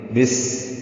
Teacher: بس سین ساکن ہے، با کی زیر کو سین سے ملا دیں گے، سین پہ ہمس ہوگا، سیٹی جیسی آواز سے نرم ادا کریں گے۔ بس یعنی موٹا نہیں کرنا اس کو۔